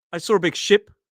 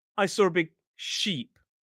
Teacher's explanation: It's slightly longer in the word sheep. · Sheep has that long e vowel sound up towards the front of the mouth. I slightly down slightly back and short.